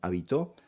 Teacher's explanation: Si se acentúa la última sílaba, como en habitó, la palabra se considera aguda.